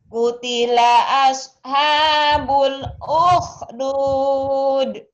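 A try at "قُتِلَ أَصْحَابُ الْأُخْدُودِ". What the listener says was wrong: Yang belum keluar itu haknya suka lupa ya. H dadanya udah pinter. H kecilnya masih belum. Qutila asha. Kurang ngedesah nih ini. Qutila ashabul sama kh-nya ya. Qutila ashabul ukhdud.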